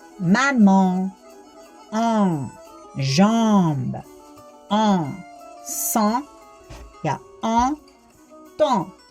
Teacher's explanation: an, am, en ja em hääldatakse läbi nina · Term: nasaal-ninahäälikud